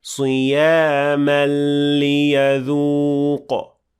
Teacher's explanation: between the word صيام and ليذوق, there is إدغام كامل without غنة. So you should say صياما ليذوق.